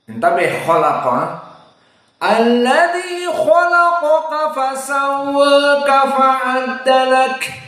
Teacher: kaf termasuk hams. Lak dikeluarkan, bukan lak ditelan.